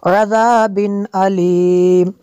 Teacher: ذال کو نرم کرنا ہے اور یہاں پہ غنہ نہیں کرنا